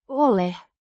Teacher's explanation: pronounced Ole. with emphasis on the first syllable.